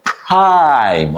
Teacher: P R is very much connected and you pronounce it in one cluster. You make your mouth smaller. Okay. So it sound like P prime.